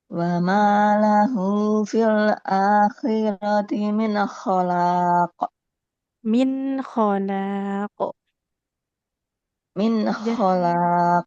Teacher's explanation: jadi nun sukunnya itu enggak boleh memantul ya